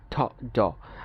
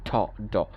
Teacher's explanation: দাঁতের মাড়ির যে গুড়ি আছে, মাড়ির গুড়িতে আমরা ছাপ দিয়ে বলি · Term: আলভিওলার সাউন্ড